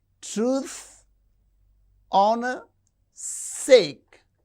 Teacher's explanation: Men who for truth and honor's sake. Men, truth, honor, sake. These are stressed.